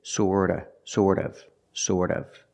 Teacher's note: Remember the T in sort of is pronounced with a fast D.